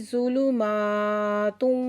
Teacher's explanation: ज़ुलुमा मीम के ऊपर खड़ा ज़बर है, 2 हरकत खींच के पढ़ेंगे।